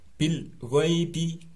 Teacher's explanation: suara al-nya ini dibaca idhar atau jelas, bil, tanpa ada bunyi bila ghaibi salah, tapi harus bersih, bil jelas tapi bersih, bil ghaibi, ada ya sukun setelah fathah dibaca len atau halus tanpa panjang.